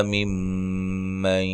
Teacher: میم مشدد پہ غنہ ضروری ہے